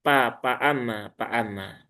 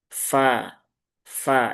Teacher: Dua ujung gigi seri atas bertemu dengan bibir bawah, ya, tetapi yang bagian bagian dalam. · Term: huruf fa